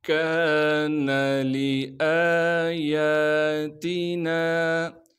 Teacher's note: کان لآیاتنا، کاف کو باریک کر کے پڑھیں گے اور کاف کے بعد الف مدہ ہونے کی وجہ سے کاف کو ایک الف کے مقدار کھینچیں گے، لام کو بغیر کھینچے پڑھنا ہے، حمزہ پر کڑا زبر ہونے کی وجہ سے حمزہ کو ایک الف کے مقدار کھینچیں گے، یا پر بھی کڑا زبر ہونے کی وجہ سے یا کو بھی ایک الف کے مقدار کھینچیں گے، تا کو باریک کر کے پڑھیں گے، نون کے بعد الف مدہ ہونے کی وجہ سے نون کو ایک الف کے مقدار کھینچیں گے۔